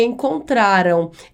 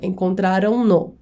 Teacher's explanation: Esse AM, esse M no final do verbo, dá um som nasalizado para o verbo.